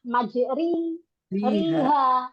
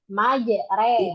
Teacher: Yang betul adalah memiringkan bunyi fathah pada kasrah. Gitu, ya. Nah, sehingga bunyinya adalah majreha. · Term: imalah